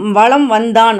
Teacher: மகர மெய்யை அடுத்து ஒரு வகரம் வரும்போது தனக்குரிய அரை மாத்திரையிலேருந்து குறைந்து கால் மாத்திரையாக ஒலிக்கிறது